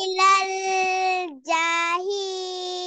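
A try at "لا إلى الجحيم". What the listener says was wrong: যাতে তো টান দেওয়া যাবে না, এখানে দ্রুত জাহি।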